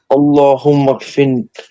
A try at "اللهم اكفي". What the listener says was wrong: Fi. Allahumma fi. Fi only. Allahumma fi. Allahumma